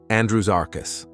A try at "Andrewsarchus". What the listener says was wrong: It's S, not Z. Andrewsarchus, not Andrewsarchus. Andrewsarchus. Another classic mispronunciation from this channel.